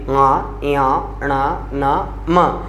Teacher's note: वे व्यंजन जिनका उच्चारण नाक की सहायता से किया जाता है या नाक की सहायता से होता है उन्हें नासिक के व्यंजनों के नाम से जाना जाता है।